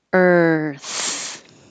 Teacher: Earth. And it does take time to go from your tongue being curled back for the R to being further forward and out for the TH. Earth. If it's the verb, the RE is very hard to hear because it's very short and just a R.